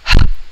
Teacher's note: the glottal sounds, which is made at the glottis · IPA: /h/